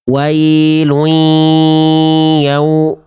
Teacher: Jangan sampai wawunya terkontaminasi jadi ada dengungnya. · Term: wawu sukun